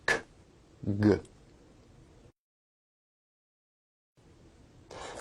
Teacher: Velar sounds are produced at the velum or soft palate